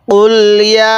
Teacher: ইয়া খারা জবর ইয়া, এই ইয়ের মধ্যে আমরা 3 আলিফ টান দিব, কারণ মদের হরফের উপর এরকম চিকন চিহ্ন, এরপর এরকম লম্বা হামজা থাকলে সেখানে আমাদের 3 আলিফ টানতে হয়।